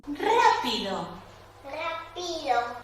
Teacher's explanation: En vez de ubicar el cambio de altura tonal en la primera sílaba de la palabra, lo está ubicando en la segunda, pi. Con lo cual, ustedes pueden ver en la curva azul que el descenso es tan rápido en pi, ¿sí? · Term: acentuación atípica